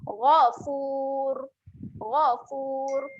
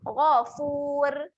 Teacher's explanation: Boleh Seterusnya huruf ra di hujung ni, keadaan ra-nya adalah ra yang tebal. Jadi kita kena muncungkan mulut lah untuk jaga sifat tebal dia.